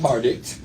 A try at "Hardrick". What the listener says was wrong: There's an R in there. H-A-R-D.